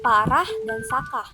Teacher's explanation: lambang fonetis A dengan bunyi rendah dan tak bulat, contoh kata parah dan sakah.